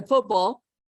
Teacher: If I don't say football, if I say football, I gotta get the T in there, even though it's not very strong